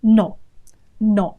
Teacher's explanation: With no diphthong there, no two vowel sounds, just the one vowel sound.